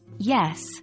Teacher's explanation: involve the middle part of the tongue and the hard part of the roof of the mouth, known as the hard palate. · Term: palatal sound